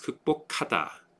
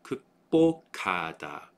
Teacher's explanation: the K sound goes up, and this becomes a forticized B sound